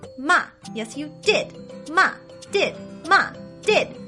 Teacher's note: do you hear the emphasis on the word did that is the fourth tone a fast downward sound